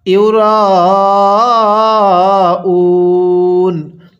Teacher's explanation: র এর মধ্যে অবশ্যই আমরা 4 আলিফ টান দিব, কারণ মদের হরফের উপর এরকম মোটা চিহ্ন, এজন্য 4 আলিফ টানতে হবে।